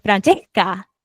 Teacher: Hay un detalle que me flipa mucho del ajá, acento argentino, y es okey. que si tienen una S antes de otra consonante, la aspiran.